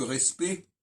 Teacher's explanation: D'abord, petite parenthèse linguistique, vous remarquerez que quand on dit respect, qui s'écrit R-E-S-P-E-C-T, on entend que respect, on n'entend pas les dernières lettres, on n'entend pas le CT